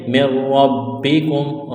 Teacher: را اور با کو سختی کے ساتھ پڑھنا ہے، را کو موٹا کرنا ہے